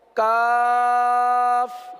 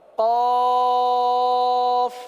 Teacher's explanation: کاف باریک ادا ہوتا ہے، قاف پر ادا ہوتا ہے ، قاف دو نقطے والا قرآن والا قاف، اور کاف باریک